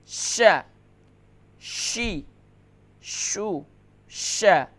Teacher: اس کا مخرج ہے حروف شجریہ میں سے ہے، وسط زبان وسط تالو